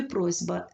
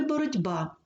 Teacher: глухі приголосні перед дзвінкими вимовляються як парні їм дзвінкі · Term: уподібнення